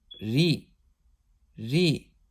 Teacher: when the ra has a zer, it'll be pronounced with an empty mouth